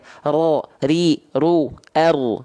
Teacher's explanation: Tapi kalau huruf ro, getarannya sedikit saja. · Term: takrir